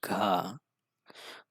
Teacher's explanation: घ डायरेक्ट गले से आवाज आ रही है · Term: कंठ